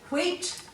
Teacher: if you say wheat you can feel air after the w so you know that there's an h there there's nothing tricky